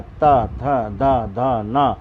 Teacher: दांतों को छू करके हमारी जीभ आती है, तो ये त वर्ग के होते हैं। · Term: दांतों का स्पर्श